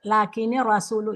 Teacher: dia ini langsung masuk yang melebur ke ro itu namanya ee idgham bila gunah.